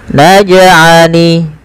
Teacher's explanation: pantulkan jim ketika ia berharokat sukun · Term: qalqalah